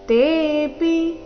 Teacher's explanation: ತೆ ದೀರ್ಘ ಪಿ ರಸ್ವ